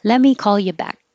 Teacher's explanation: i'm going to do this let me change this to lemmy you just skip the t completely and blend it together